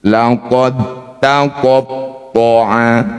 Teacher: Dua huruf yang sama makharijul hurufnya. Tempat keluarnya huruf dal dan tho ini sama-sama dal dan ta maksudnya sama-sama di ujung lidah.